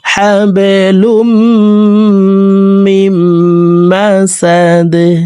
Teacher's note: দাল কলকলার হরফ নিচের দিকে ধাবিত করে ধাক্কা দিয়ে এই দালকে সাকিন করে ফেলবো।